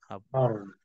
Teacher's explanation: Tepi lidah atau penghujung lidah di depan tu dia akan ada getaran. Ar. Itulah nak menunjukkan sifat takrir.